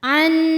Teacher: nun sukun yang menghadapi huruf halqi atau huruf tenggorokan yaitu Hamzah maka nun sukun ini kita bunyikan dengan jelas terang